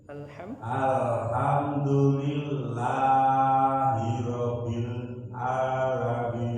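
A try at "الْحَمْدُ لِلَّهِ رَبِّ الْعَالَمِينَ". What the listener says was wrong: Nah, hirabbil ditekan hirabbil alamin.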